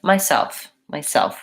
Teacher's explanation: when I'm saying the word myself I want to have second syllable stress